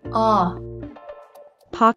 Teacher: Note that the O is pronounced as an aw sound.